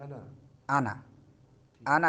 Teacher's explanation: आना नहीं पढ़ना है, ठीक है, लंबा नहीं करना है।